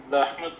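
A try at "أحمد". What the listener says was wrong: ہاں وہ وقف کر لیں تو آسان ہو جاتا ہے، لیکن ہم نے پوری حرکت پڑھنی ہے نا. مد احمد غیر منصرف ہے، جر میں زبر ہے.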